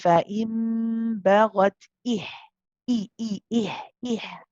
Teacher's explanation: It's got to have that E. It's like the sound is stopped, and then your sound starts all of a sudden. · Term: hamza